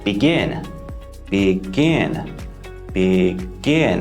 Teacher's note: two syllables it also follows the CVC pattern and most importantly the stress falls on the last syllable